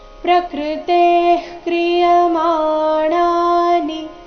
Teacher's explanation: ಪ್ರಕೃತೆ ಆದ ನಂತರ ಇರೋ ವಿಸರ್ಗದ ಉಚ್ಚಾರಣೆ ಅರ್ಧ ಖ ರೀತಿ